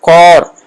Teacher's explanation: جدید فارسی میں الف کا تلفظ جیسے اردو میں آ نہیں ہے، بلکہ الف اور واو کے درمیان ایک چھوٹی سی آواز، ہلکی آواز ہے جو اردو سے واو آؤ کی طرح ہے.